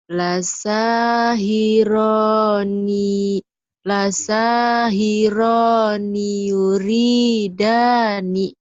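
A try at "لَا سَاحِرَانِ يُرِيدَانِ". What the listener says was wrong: Nah, gitu.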